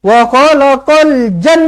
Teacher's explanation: Ja tu yang panjang 6 harakat. Kemudian nun tu yang kena dengungkan 2 harakat.